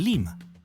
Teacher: una deformación fonética de rimac que significa el que habla sino una forma de pronunciar rimac en algunos dialectos del quechua costeño donde la r se reemplazaba por l